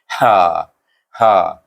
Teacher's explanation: Iaitu dia hamas mana nafas terkeluar. Itu nafas kita terkeluar.